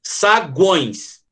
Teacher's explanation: desce no U, sobe no O e desce no E. Semi, vogal e semi. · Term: tritongo